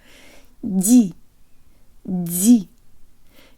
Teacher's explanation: The previous syllable starts with a soft d, where the part of the tongue behind the tip makes contact with the roof of the mouth, like for te, but it takes its time coming away from the roof of the mouth, so there's a kind of hiss or aspiration.